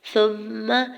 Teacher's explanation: سا کی پیش کو میم مشدد کے ساتھ ملاتے ہوئے میم مشدد پہ غنہ کرنا ہے اور زبر کو بغیر کھینچے ہوئے ادا کرنا ہے۔